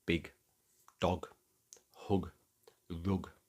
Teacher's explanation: Your vocal cords just give a good solid G, and the word concludes with that firm, hard sound. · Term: hard G